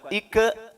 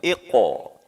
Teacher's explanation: karakter tebal dan karakter qalqalahnya harus dimunculkan. Iqo ya, ya bulat, rahang maju.